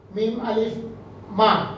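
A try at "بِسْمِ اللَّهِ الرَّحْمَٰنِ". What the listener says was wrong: মা, টান হবে না, ফাতা তাবিলা না। এই যে এই ভুলটা কিন্তু মনে রাখতে হবে। মিমালি ফাতা মা,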